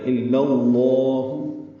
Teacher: الا اللہ کے لام کو لام اسم جلالہ سے ملا دینا ہے، لام اسم جلالہ لام کی زبر کی وجہ سے پر پڑ جائے گا۔ الا اللہ، ہاں پر پیش ہے، جلدی پڑھیں گے۔